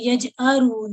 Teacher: ये हमजा है, ठीक है, जी इसकी आइन जैसी आवाज ना हो